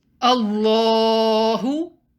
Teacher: the lamb in the name of allah should be pronounced heavy